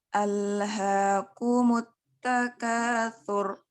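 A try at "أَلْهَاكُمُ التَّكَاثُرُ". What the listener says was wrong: Tafhimnya kurang sedikit lagi. Sur. Takasur.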